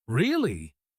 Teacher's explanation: When you say really, let your voice jump up to sound excited. Really? If your voice is flat, people will think you are flat.